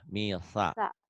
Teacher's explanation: Bukan shin tapi sa ujung lidah.